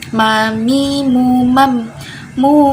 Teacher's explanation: huruf mim makronya ada di kedua bibir dengan tambahan gunnah atau getaran gundek getaran dengung ke hidung selanjutnya sifatnya itu jahe